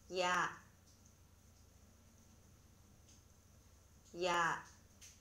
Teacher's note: 앞에서 공부한 것처럼 이중모음은 시작하는 모음과 끝나는 모음이 달라지는 모음을 말합니다. 모음 냐는 먼저 약하게 이 모음으로 시작해서 곧바로 아 모음으로 끝나는 음입니다. 이것을 한 호흡에 이어서 발음해야 합니다.